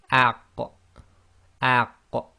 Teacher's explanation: So these two, group 4 is qaf and kaf. So this involves the tongue, the back of the tongue, touching the very back upper portion of your throat. So it's really to do with the soft palate.